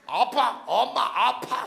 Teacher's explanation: 입술에서 나는 소리죠 입술이 붙었다가 팍 하고 터지는 소리